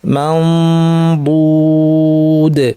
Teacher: বদের মাখরাজে জিব্বা নিয়ে ফুল প্রেশার না দিয়ে নাক থেকে গুন্না করবো, মাউ বু, বদ বলার জন্য মুখ রেডি, মাউ নাক থেকে গুন্না, বদ বলার জন্য মুখ রেডি, নাক থেকে গুন্না, মাউ বুদ।